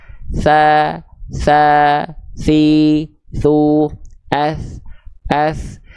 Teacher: heh heh disentuhkannya tipis-tipis saja tsa tsa tsi Tsu et et huruf tsa ketika disentuhkan punya sifat mengalir suara plus dengan mengalir nafas · ujung lidah kita ini disentuhkan ke ujung gigi seri atas kita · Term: huruf sa